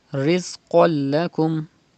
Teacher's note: you have to pronounce qaf with thicker voice. It's a mustaliya letter. And there is lam after tu zabar, after tanween.